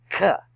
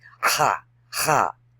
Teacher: ha ha and it comes out sounding like a K but it's actually a G mixed with an H and it's guttural it comes from the throat